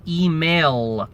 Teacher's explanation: We say email with a dark L.